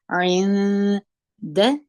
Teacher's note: عین په زیر د نون سره یو ځای کوو، د نون وروسته دال راغلی دی، نون ساکن دی، نون ورغندی لري. د نون وروسته چې دال راغلی دی دال د اخفا د تور څخه دی، نو دلته موږ دغه نون اخفا کوو.